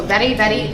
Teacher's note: the tip of your tongue is gonna pop on the roof of your mouth on the very, very. So what you should feel on hand is you should feel short hand, it should buzz up to your nose, and your mouth should almost go around like this.